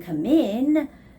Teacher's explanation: When you're saying come in, the stress goes on the word in.